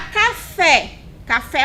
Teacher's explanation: a última sílaba de café também é mais forte